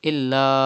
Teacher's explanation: Hamza is in the next word after alif madda. So it is madde munfasil. You have to stretch up to 5 harakat.